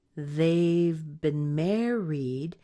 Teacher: Mare gets a lot more length and strength.